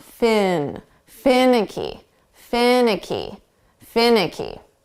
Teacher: we're going to put the syllable stress on the first sound